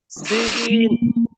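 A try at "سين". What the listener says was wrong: সিন। না, আপনার শি হচ্ছে শি না, শীষ না, সিটি। শীষ করা যাবে না, সিটি করতে হবে। সিন। সিন।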